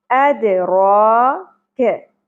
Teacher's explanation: جس طرح ایک آواز ٹکرا کر واپس آتی ہے اسی طرح مخرج سے ہلا کر پڑھنا ہے، اد۔ را، را کے اوپر کھڑی زبر ہے، را پر ادا ہوگی اور ایک الف کے برابر کھینچنا ہے، اد را کے۔ کیف باریک ہوگا، زبر کو زیادہ نہیں کھینچیں گے، اد را کے۔